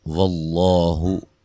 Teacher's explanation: لفظ اللہ کے لام کو موٹا ادا کریں گے، اس سے پہلے حرف پر زبر ہے اور یہ مد اصلی ہے۔